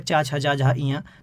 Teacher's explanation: जो चा वर्ग होता है, चा, छा, जा, झा, इया, तो इनमें तालु का प्रयोग होता है, जीव तालु को टच करती है